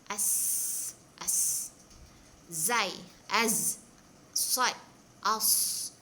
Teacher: As-safir ni maksudnya bersiul ataupun berdesir. Ketika menyebut hurufnya seorang seolah-olah macam ada siulan ataupun desiran di situ.